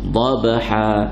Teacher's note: qalqalah sughra, mendetaknya cepat, laju. Dhabha, jangan lambat.